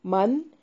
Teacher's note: نون ساکن کا اظہار ہوگا. غنہ نہیں کرنا.